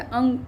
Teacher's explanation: ख में श दिया हुआ है, श जो है इसका उच्चारण स्थान तालु है इसलिए ये तालु हो गया। अंग जो है, अंग को जब हम बोलते हैं तो नासिका से बोलते हैं, नाक से आवाज़ आती है